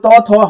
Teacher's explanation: जो त थ हम बोलते हैं तो देखिए हमारे जीभ जो है दांतों से टकराती है, तो इनका जो उच्चारण स्थान है ये दंत है।